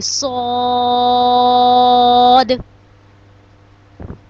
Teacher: صاد کو جب ہم ادا کریں گے تو اس کو ہم تھوڑا موٹا بھی کریں گے اور سیٹی کی آواز بھی آئے گی